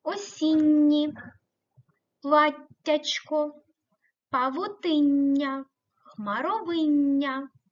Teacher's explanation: читаються слова де м'які подовжені приголосні звуки осінні платтячко павотиння хмаровиння вони читаються м'яко із подовженням